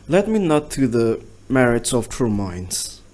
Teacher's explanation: 10 syllables with unstressed, stressed, unstressed, stressed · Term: iambic pentameter